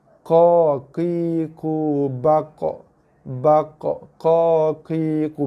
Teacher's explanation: Sebab bibir tak bekerja pun untuk keluarkan bunyi. Yang bekerja keluarkan bunyi ialah pangkal lidah.